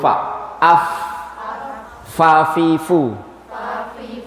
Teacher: gigi seri atas menempel ke bibir bawah